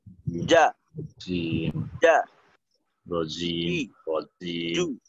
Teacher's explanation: কারণে আওয়াজটা যা যা যা যার মতো হয় যা যা না জিমের উচ্চারণটা হবে এমন ভাবে যে কোনো বাতাস বের হবে না যা জিমের ক্ষেত্রে বিশেষভাবে খেয়াল রাখতে হবে মাখরাজটা অর্থাৎ জিব্বার মধ্যখানটা